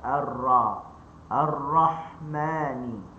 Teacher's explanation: Ar-RA fathah buka mulut. Dan ra ni dibaca dengan tebal. Okey. Ada sikit lekuk pada tengah lidah.